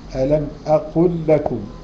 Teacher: ألم أقل لكم، أدي لام ولام، اللام أقل اللام بتاعتها ساكنة، ولكم اللام متحركة، فحصل الإدغام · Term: إدغام مثلين صغير